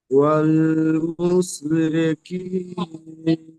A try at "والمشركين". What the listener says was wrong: এখানে দাঁড়ান, ওয়াল মুসরি বলছেন, এখানে শিন আছে, শিন উচ্চারণটি মোটা আওয়াজ হবে। ওয়াল মুশ, মুশ, সিন, মুস সিনের মতো হয়ে যাচ্ছে। ওয়াল মুশরিকিনা।